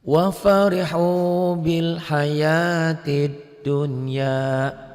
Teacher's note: Tetapi karena bertemunya satu kata, satu kalimat, satu gabungan tidak dibaca idgham, tapi dibacanya harus dibaca idhar mutlak